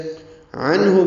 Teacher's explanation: عنہ میں عین وسط حلق سے ادا ہوگا، نون ساکن پہ اظہار ہے، اظہار حلقی، ہا اقصی حلق سے ادا کریں گے، معروف طریقے سے جلدی پڑھیں گے.